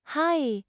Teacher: Pronounce it hai with a slightly longer vowel sound than the English word.